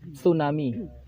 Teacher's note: tsunami itu pakai ujung lidah kegigit pakai gigi